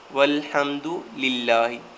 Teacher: اس لیے للہ کو ہم باریک پڑھیں گے کیونکہ پیچھے زیر آ گئی